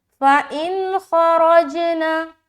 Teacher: اظہار کا قاعدہ کریں گے, کیونکہ خا حروف حلقی میں سے ہے, اور جب بھی نون ساکن کے بعد حروف حلقی میں سے کوئی حرف آئے تو آپ نے وہاں پر اظہار کا قاعدہ کرنا پڑتا ہے, یعنی کہ نون کی آواز کو صرف ظاہر کریں گے